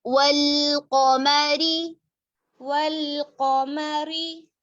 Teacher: कॉफ मोटा है लेकिन मीम को बिल्कुल बारीक करेंगे